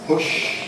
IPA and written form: pʊʃ (push)